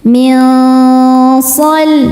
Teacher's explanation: Berikutnya ada ikhfa hakiki awsat, karena nun sukun bertemu shad. Cara bacanya nun disamarkan menuju shad disertai dengungan. Dengung dan kesamarannya sama besar.